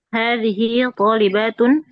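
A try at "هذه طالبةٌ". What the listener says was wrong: Hadhihi talibatun. Hati-hati bacanya pendek ya. Batun, jangan batun. Talibatun.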